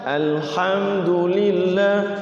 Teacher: Alhamdulillah enggak boleh tapi langsung Alhamdulillah alhamdulillahiabbilamin gitu jadi HAM itu mim sukunnya tidak boleh dilama-lamakan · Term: izhar syafawi